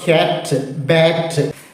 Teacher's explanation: sound ഏതാ കറ്റ് ഇതിന്റെ രണ്ടിനും നടുക്കുള്ളത് ക്യാറ്റ് അല്ല അയ എന്ന് പറഞ്ഞാൽ ആയും യായും ഇട കലർന്ന ഒരു ശബ്ദം